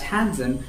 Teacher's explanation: you don't have to pronounce the d